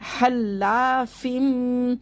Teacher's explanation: ये हल्ला नहीं पढ़ना है, या हा को हलक से निकाल के पढ़ना है